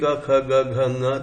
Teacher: अब आप ऐसा बोलेंगे क ख ग घ ङ तो आपको ये पता लगेगा कि प्लेस ऑफ आर्टिकुलेशन इनका सबका वही है। एक ही जगह से ये ध्वनियां बनती हैं, तालू से बनती हैं, वो भी सॉफ्ट पैलेट से, हार्ड पैलेट से नहीं बनती। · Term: वेलरिक